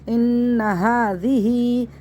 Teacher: ہا ایک الف برابر کھینچ کے پڑھنا ہے